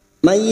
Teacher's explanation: May nun sukun bertemu ya idgham bi gunnah, nun sukun atau tanwin yang bertemu dengan salah satu huruf 4 ini namanya bacaan idgham bi gunnah, siap masuk dan mendengung masuk pada huruf berikutnya yaitu huruf ya dan mendengung selama 3 harokat